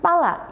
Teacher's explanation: palla yang berarti bola memiliki bunyi L yang panjang.